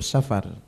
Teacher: dia baca safar dipanjangkan, tidak ada mat di sana